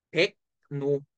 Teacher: 그러면 먼저 뭐부터 일어나? 기역 다음 리을은 니은으로 변해. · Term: 리을의 비음화